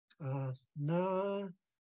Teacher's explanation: It's a loaded K from the back of the throat, and then the NGAA is very nasal.